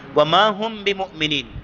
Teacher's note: میم ساکن ہے اور اس کے بعد با آ جائے تو یہاں بھی غنہ کرتے ہیں